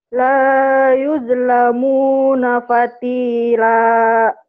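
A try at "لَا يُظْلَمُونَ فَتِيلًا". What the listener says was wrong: Jangan patile ya, patile mah udah meninggal. Fatila. La yuzlamuna fatila. Fatile ada e-e-nya. Jadi dalam bahasa Arab itu Quran itu tidak ada o dan e. Tapi ada huruf-huruf tertentu yang bunyi o, yang bunyi e.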